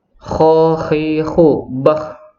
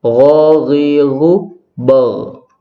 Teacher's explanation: sifat jahr, tidak mengeluarkan nafas atau suaranya bulat · Yang membedakan sifatnya. Kho termasuk sifat hamas, ada keluar nafas atau serak-seraknya itu.